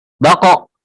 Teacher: qalqalah atau suara tambahan memantul